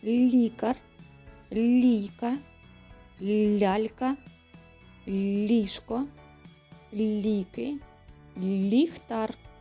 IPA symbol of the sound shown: л'